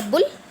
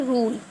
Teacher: यहाँ हमने ऊ की तरह पढ़ा, बुल. यहाँ पे खींच के पढ़ेंगे रूल.